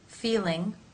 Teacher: the tongue tip for the L is as expected raised to the roof of the mouth in the r sound you can see more dark space in